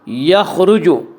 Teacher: خا کو پر پڑھیں گے، خا حروف مستعلیہ میں سے ہے۔ حروف مستعلیہ 7 ہیں جن کا مجموعہ خصہ ضغط قز ہے، جو ہمیشہ ہر حال میں پر پڑھے جاتے ہیں۔